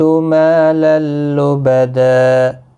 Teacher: ما الف مدہ ہے، 1 الف کی مقدار کے برابر کھینچ کر پڑھیں گے